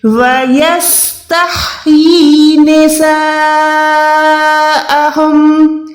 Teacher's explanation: یا کھڑی زیر ی کو بھی آپ نے 1 سیکنڈ لمبا کرنا ہے